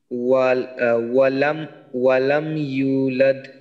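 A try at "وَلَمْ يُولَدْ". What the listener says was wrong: ওয়ালাম ইউ, এই যে এখানে এক আলিফ টান হবে, যে ওয়াও সাকিন, পেশের বাম পাশে ওয়াও সাকিন।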